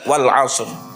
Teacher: E tafkhimnya ro harus terlihat wal asr.